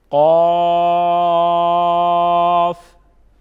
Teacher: اس میں 5 الف کے برابر مد ہوگی، اس کو 5 الف کے برابر کھینچ کے پڑھیں گے